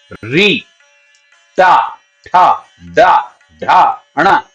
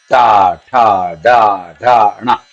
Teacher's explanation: जीव आपके ऊपर जाकर के दांतों के ऊपर के जो मैंने कहा खुरदुरा स्थान है जिसको मुर्दा बोलते हैं वहां जाके टकराए गी